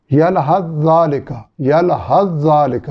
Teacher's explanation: یہ سا اور زال کا مسئلہ ہے، دونوں کا مخرج ایک ہے